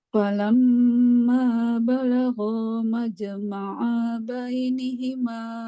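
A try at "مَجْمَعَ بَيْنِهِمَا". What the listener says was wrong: Ainnya jangan panjang. Majma'a bain. Cepat.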